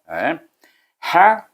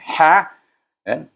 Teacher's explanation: Ha, suku kata ini ha, hamas, berangin bunyinya. Ha, kemudian dia ditasydidkan dengan huruf qaf, bunyinya haqqa.